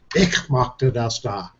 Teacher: If you got in Bavarian, ich is very guttural.